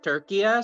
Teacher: it's three syllables then, not two. Yeah, you do pronounce that little dangling vowel.